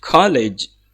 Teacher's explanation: don't forget to stress the word co, the syllable co, and then college.